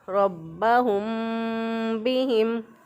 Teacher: मीम की आवाज़ को छुपा कर और एक अलिफ के बराबर नाक में आवाज़ ले जाकर फिर इसको अदा करेंगे। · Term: इख्फ़ा शफ़वी